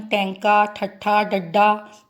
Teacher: ਬੋਲ ਕੇ ਦੇਖੋ ਜੀਭ ਸਾਡੀ ਉਲਟ ਹੋ ਜਾਂਦੀ ਆ, ਤਾਲੂ ਨੂੰ ਛੂੰਹਦੀ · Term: ਉਲਟ ਜੀਬੀ